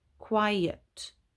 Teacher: in quiet the e is a schwa sound